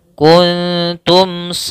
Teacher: kuntum mim mati bertemu dengan Shad maka ini hukum bacaannya yaitu izhar syafawi izhar syafawi mimnya harus jelas kuntumin tebalkan pada lafal melafalkanad karenaad ini huruf yang e masuk